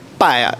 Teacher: La paraula palla, amb doble L, a Mallorca se pronuncia amb una I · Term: iodització